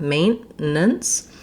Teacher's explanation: So I'm going to stop on my N, and it's almost like that T drops off. I just need my N to be very short, maintenance. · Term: stopped T